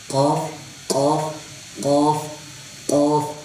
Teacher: اس کے پڑھنے میں جو سب سے زیادہ بڑی غلطی ہے وہ یہ ہے کہ اس کو کاف نہیں پڑھنا، بالکل باریک نہیں پڑھنا. اور دوسری بات یہ ہے کہ اس کو موٹا پڑھنا ہے، قاف قاف قاف قاف.